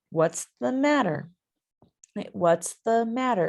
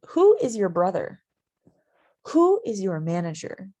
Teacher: usually in english when we say an information question what's the matter what's the matter it goes up and then down